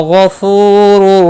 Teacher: غین مستعلیہ ہے، پر پڑا جائے گا